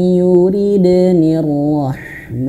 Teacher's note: nunnya masuk ke huruf ya dan dia wajib masuk hidung. Nah ini sering banget saya bahas ya, idgham bi gunnah itu bukan hanya sekedar ditahan, nah, harus masuk hidung, bukan hanya sekedar yuride, bukan, tapi masuk hidung.